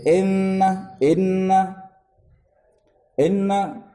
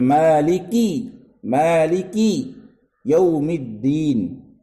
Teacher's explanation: ہم کسرہ ادا کر رہے ہیں، زبان نیچے کی طرف جا رہی ہے، آواز بھی نیچے کی طرف جا رہی ہے